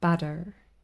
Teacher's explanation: the flap T this little tap sound as in butter as pronounced but by an American or for